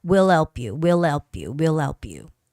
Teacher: you don't have to make too much effort to make that H sound.